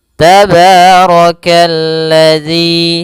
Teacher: rnya dibaca tebal karena dia ro berharakat fathah.